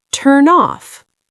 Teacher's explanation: The N sound connects to the O sound. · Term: linking